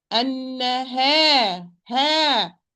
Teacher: The ha is light, so the alif is going to be light.